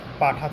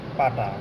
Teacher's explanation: মহাপ্রাণ থেকে অল্পপ্রাণ যদি হয় তাহলে সেটা হবে ক্ষীণায়ন